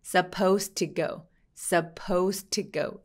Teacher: 뒤에 to가 나왔으니까 D하고 T가 만나서 한 번만 발음합니다.